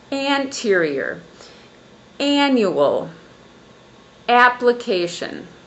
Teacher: So all those three words have the syllable stress on the first syllable.